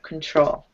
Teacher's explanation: so it's just emphasizing the second syllable